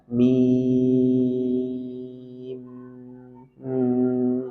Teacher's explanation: Sedikit alirkan karena dia punya sifat bainiyah atau tawassut, jangan dipotong mim, tapi sedikit alirkan. Mim. Nah, ini untuk memenuhi sifat dia sebagai tawassut atau bainiyah.